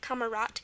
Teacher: it's pronounced t at the end so it's spelled with a d